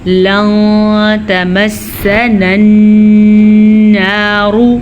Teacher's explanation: تو ہم نون ساکن کو چھپا کے غنے کے ساتھ پڑھیں گے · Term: اخفا